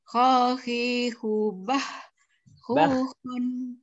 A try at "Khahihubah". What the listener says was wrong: Bukan bah. Bah. Beda kan? Bah. Bah. Kurang naik, Bu, kurang naik. Yang nyangkut kurang naik.